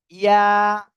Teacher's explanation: জিহ্বার মাঝখান তার বরাবর উপরের তালুর সঙ্গে লাগিয়ে সিম্পল ভাবে উচ্চারণ হবে ইয়া, আর 1 আলিফ টান হবে।